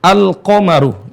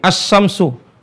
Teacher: ulama dan orang-orang Arab ya kalau huruf lam itu berdekatan ya huruf lam itu berdekatan dengan huruf setelahnya secara tempat keluar maka lam akan tidak bisa dilihat tidak bisa terdengar suaranya makanya dibacanya dengan seolah-olah ya seolah-olah lam itu nggak ada jadi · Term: lam syamsiah